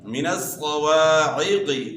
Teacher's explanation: عین کی آواز گلے کے درمیان سے نکالنی ہے